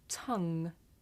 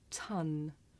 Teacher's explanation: Now ng is made at the back of the mouth and n is made behind the teeth.